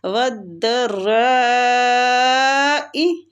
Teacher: وَالضَّرَّاءِ ادھر نبر بھی ہوگا، ٹھیک ہے، یہ مد لازم کلمی مستقل ہو رہی ہے، نبر بھی کریں گے، نبر کا معنی ہوتا ہے آواز کو بلند کرنا، تو اس کی مقدار تقریباً 4-5 حرکات ہیں۔